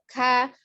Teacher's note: Jadi ketika dia sidah agak tertahan suaranya, tapi tidak menekan begitu ya, karena dia lidahnya tetap terhampar. K, ada hembusan nafas yang mengalir ketika mengucapkan bunyi k